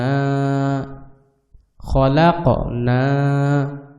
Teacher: কফটা হচ্ছে কলকলার হরফ, কলকলার হরফের উপরে জজম আসছে, এই জন্য এটাকে অবশ্যই কলকলা করতে হবে